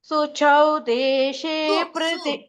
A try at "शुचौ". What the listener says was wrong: अत्र सु नास्ति शु शु